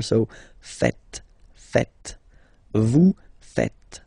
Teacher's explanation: final S here is not pronounced, and then this E is not pronounced either.